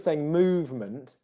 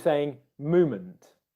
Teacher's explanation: so instead of saying movement he was saying movement and there was no v sound there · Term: dropping the v sound